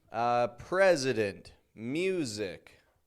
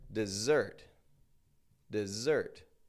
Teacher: your S's sound like Z's. This happens a lot in English. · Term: S sounds like a Z